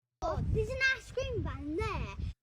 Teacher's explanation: So they'll drop the H, and she'll also, instead of using diphthongs, we get like a longer vowel sound